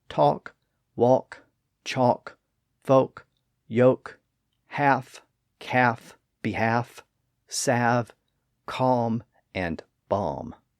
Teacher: the L sound disappeared in a word when it occurred after an A or O and before an F, V, M, or K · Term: loss of the L sound